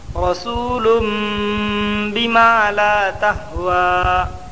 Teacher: دو پیش کی تنوین کو میم سے بدل کر غنہ اور اخفا کے ساتھ پڑھیں گے، اس کو اقلاب کہتے ہیں۔